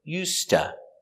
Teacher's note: the s is pronounced with the s sound with no voice the s is pronounced with no voice because it is before the voiceless consonant